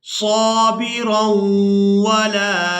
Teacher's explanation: रा को वाव मुशद्दद के साथ मिलाते हुए गुन्ना के साथ अदा करेंगे।